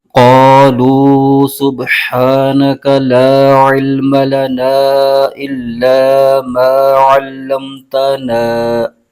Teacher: شروع میں قاف ہے، یہ حروف مستعلیہ کا حرف ہے، اس کو پر یعنی موٹا کر کے پڑھنا ضروری ہے۔ اس پر زبر ہے اور آگے الف آ رہا ہے۔